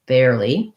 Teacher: the li is just a tense e vowel